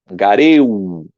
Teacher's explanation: dois gamas aqui, o gama duplicado, geminado. Então, o primeiro fica nasalizado.